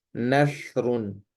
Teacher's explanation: سا کی آواز باریک ہوتی ہے، اور دوسری چیز یہ نرم ہوتی ہے، اس کو بہت نرمی سے ادا کیا جاتا ہے